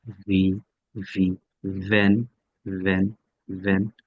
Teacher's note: এই ভিটা আর এফ টা সেম উপরের দাঁত নিচের ঠোঁট এফ উপরের দাঁত নিচের ঠোঁট এফ উপরের দাঁত নিচের ভি ভি